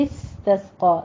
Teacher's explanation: سین پہ آپ نے سیٹی کی آواز لے کر آنی ہے